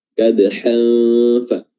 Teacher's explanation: huruf nunnya disamar-samarkan dengan cara meletakkan makhraj pada makhraj huruf setelahnya, dalam hal ini adalah huruf fa. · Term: ikhfa haqiqi